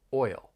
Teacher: You have that vowel sound, which is a diphthong, oi, followed by that dark L, oil, oil. And when you put it all together, it's still one syllable.